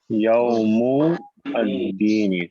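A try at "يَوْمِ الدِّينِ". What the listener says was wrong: حرکت پوری پڑھا کریں جی، جب تک آپ عربی گرامر سیکھ رہے ہیں حرکت پوری پڑھا کریں. یوم الدین.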